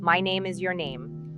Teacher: make a conscious effort to land on a lower note at the end like a stone settling on the ground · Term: downward inflection